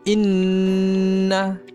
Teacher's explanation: Nun ada tasdid berbaris fathah. Jadi kita kena kuatkan dan kita kena dengung.